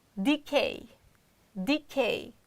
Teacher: Decay you see e d k k is strong syllable therefore we can't reduce the sound but we can reduce the first syllable which is unstressed